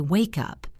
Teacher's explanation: When I say it naturally, I say wake up. The K sound at the end of wake connects to the U sound at the beginning of up. It sounds like wake up. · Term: linking